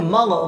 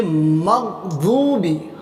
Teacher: गैरिल मग, बहुत सारे बच्चे पढ़ते हैं मग, गैन को कलकला कर देते हैं इसलिए मग़दूबी, गैन को कलकला नहीं करेंगे